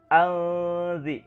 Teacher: huruf zal ini adalah bagian daripada huruf ikhfa. Maka harus didengungkan, ya, harus diikhfakan, disamarkan menjadi alzir.